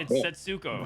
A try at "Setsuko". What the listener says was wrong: Like the emphasis is on first syllable.